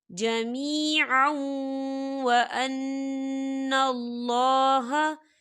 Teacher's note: یہاں پر ادغام ہوگا تھوڑا سا غننے کے ساتھ